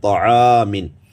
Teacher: عین باریک ہے تو الف کو بھی باریک پڑھیں گے، طعامن۔ ٹھیک ہے، یہ تو تھی الف کی ترکیب کہ الف جو ہے وہ پہلے والے حرف کے مطابق ادا کیا جاتا ہے۔